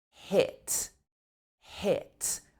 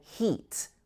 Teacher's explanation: tongue is quite far forward and quite high up in your mouth but it's a short vowel sound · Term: short e sound